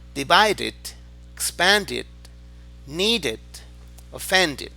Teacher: Y recuerden que la I no es una I fuerte, I, no, sino como entre E e I.